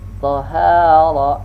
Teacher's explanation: dha ini al-isti'la juga dengan mengangkat pangkal lidah ya, sehingga mengakibatkan huruf dha itu menjadi besar dan tidak mengikutkan bibir itu membulat di saat kita melafalkan huruf dha. · Dha ini adalah huruf lisani, ujung lidah dengan ujung gigi yang di atas. Nah, dan dha ini dia termasuk rakhawah, berlalu, tidak dadakan, tidak syiddah artinya.